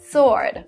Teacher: a weapon which is written with a w but you don't pronounce this w